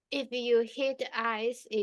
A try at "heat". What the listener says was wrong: Not hit, heat. you're saying hit, heat.